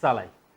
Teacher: यो दन्त्य स भनेको जिब्रोको टुप्पो र दाँतको फेदबाट उच्चारण हुन्छ